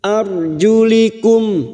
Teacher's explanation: ro sukun yang didahului fathah kita baca tafkim arjulikum mim sukun bertemu Hamzah Idhar syafawi mim sukun dibaca jelas